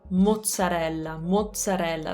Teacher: as for the double consonant on the zeds to make that double consonant we just have to make a little pause almost like a glottal stop